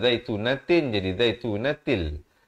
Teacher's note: Di sini masuk tanpa dengung. Daripada zaitunatin jadi zaitunatil